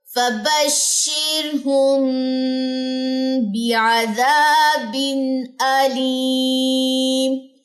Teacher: اخفاء شفوی کا قاعدہ، تو غنہ ہوگا. لیکن یہاں پہ میں نے غنہ نہیں کیا کیونکہ تنوین کے بعد حمزہ ہے